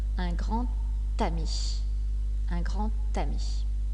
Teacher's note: La lettre D a également une prononciation spéciale quand elle fait la liaison. Elle se prononce « t ».